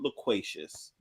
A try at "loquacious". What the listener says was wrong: I think it's loquacious. Loquacious.